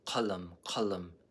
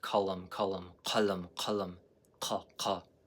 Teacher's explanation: But this is qaf, a uvula K.